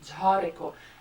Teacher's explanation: the way I pronounce it, you really hear the aspiration, jhareko. And that's the difference, because I feel if when you try to give a aspiration to a sound that you're not used to aspirating, you instinctively start making it non-sounding.